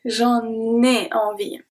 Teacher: So here the N from en is going to be transferred to et. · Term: links